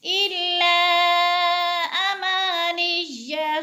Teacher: یعلمون الکتاب الا امانی، الا پہ بد منفصل ہے، حروف مدہ کے بعد حمزہ دوسرے کلمے میں ہے اما کا، تو ادھر مد منفصل ہو رہی ہے، مد منفصل کو چار الف کے برابر لمبا کر کے پڑھتے ہیں۔